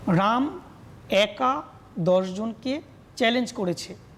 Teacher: একাদশটাকে আমরা একাদশের মাঝে একটু ছেদ দিলাম, মৌখিকভাবে, অবশ্যই লিখিতভাবে না